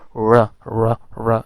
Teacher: तो Spanish, फिनिश, Russian, Arabic, Persian, Thai और कुछ और लैंग्वेजेस भी हैं, तो उनमें यही जो साउंड है उसके लिए IPA में यही सिंबल डिवाइस किया गया, क्योंकि वो इंग्लिश के इस र से डिफरेंट है, वो ट्रिल्ड और रोल्ड आर है। तो ट्रिल्ड और रोल्ड आर के लिए ये वाला सिंबल यूज़ होता है। · आमतौर पर टंग टिप जो है वो टंग थोड़ी रोल करके आती है अल्वियोलर रिज पर। एक तो डायरेक्ट हम रा कहते हैं, लेकिन अगर रोल्ड आर में र र र इस तरह का थोड़ा साउंड आता है।